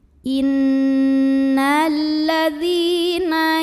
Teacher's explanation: Karena ada ya sukun yang didahului baris kasroh. Cara membacanya dipanjangkan dalnya 2 harokat saja.